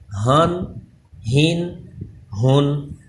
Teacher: یہ ہا حلق کے درمیان والے حصے سے ادا ہوتا ہے، اس میں سانس کی آواز آنی چاہیے